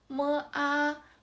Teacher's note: this tone is very flat with no highest part of the lowest part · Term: first tone